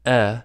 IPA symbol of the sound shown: ɛ